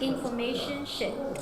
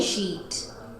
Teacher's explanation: To make the E sound, try to spread your lips and slightly lengthen the vowel.